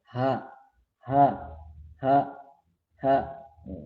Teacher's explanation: sifat huruf hams atau samar atau pengucapan huruf disertai dengan keluarnya nafas, huruf h, h, h, h, ya, h, h, h, h, coba h.